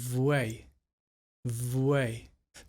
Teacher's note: that V sound with the w sound and saying v v the bottom lip is between the teeth for the V sound and then the lips just open forwards for the w